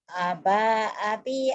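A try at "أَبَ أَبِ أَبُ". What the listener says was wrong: Pendek, salah. Gak ada yang panjang. Aba abi abu. Gak ada yang panjang, ayo.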